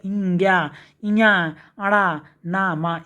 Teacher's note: अनुनासिक शब्दों के उच्चारण में वायु ध्वनि मुख के साथ साथ नाक से भी निकलती है